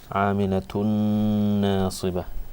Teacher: you put ghunnah on it, where you read it through your nose and you stretch it for 2 lengths